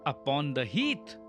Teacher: The long vowel sound in heath allows the line to stretch into the open landscape.